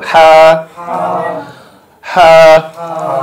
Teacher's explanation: হলকের মাঝখান থেকে, হলকের মাঝখান থেকে উচ্চারিত হবে।